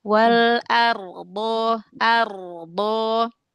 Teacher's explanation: Walaupun ra huruf tebal, tapi kalau dia dibaca tafhim seperti ro fathah, ro dah, ro sukun sebelumnya fathah, ro sukun sebelumnya dah, ya ee maka ditebalkan pangkal lidahnya dinaikkan ya ditebalkan lagi huruf ro-nya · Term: huruf ro yang dibaca tafhim